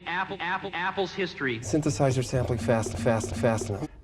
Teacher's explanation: Another thing Fassbender gets is that kind of slight nasality on sounds.